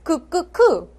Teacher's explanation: 여린 입천장과 혀뒤 사이의 소리야. 그하고 약간 뒤쪽에서.